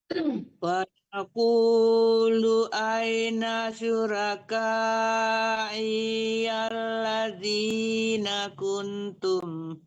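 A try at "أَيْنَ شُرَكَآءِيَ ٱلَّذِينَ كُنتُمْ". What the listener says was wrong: Ya, syuraka, i-nya jangan tertahan juga, i-nya tidak panjang ya.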